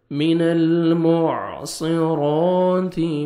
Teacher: 1 second آپ نے را کو کھینچنا ہے اور موٹا بھی کرنا ہے، تا کو آپ نے باریک پڑھنا ہے